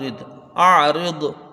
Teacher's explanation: حمزہ کو عین سے ملا کے جلدی پڑھا جائے گا، را کو دوا سے ملا کے جلدی پڑھیں گے، را کو باریک پڑھنا ہے